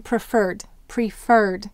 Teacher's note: Here the accent is on fur, so we're going to double the R's.